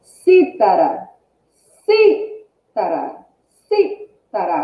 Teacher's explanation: Qual a sílaba mais forte? É o si, si. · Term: proparoxítona